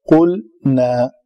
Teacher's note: قلنا، اس کو ادا کرنے کے لیے تھوڑی محنت کرنی پڑتی ہے، یہاں پہ زور پڑتا ہے۔ قلنا، لام کو قلقلہ نہیں ہونے دینا، قلقلہ صرف قاف تا با جیم دال قطب و جدن پہ ہوتا ہے جب وہ ساکن ہو